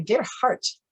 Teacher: the D at the end in German most often comes up with a T sound or a DT sound.